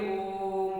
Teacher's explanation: जब कभी आप ओम का उच्चार करते होंगे ओम तो इसमें ज्यादा मात्राए लगेगी